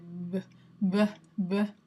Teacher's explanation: someone might say b, like it's very breathy. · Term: Breathy voiced